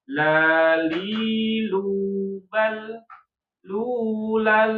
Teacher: lam tanwin fathatain ketemu dengan lam itu maka idgham jatuhnya hukumnya idgham bila gunnah. Makanya jangan dikasih gunnah.